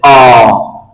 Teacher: वे स्वर जिन्ह बोलते समय हमारा मुख खुलता हो लगभग पूरा खुलता हो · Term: विवृत